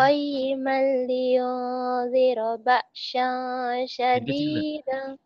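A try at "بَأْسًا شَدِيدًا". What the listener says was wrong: Sin ketuker. Sin ini sin kecil sama sin besarnya ketuker. Ba'sa syadi ya.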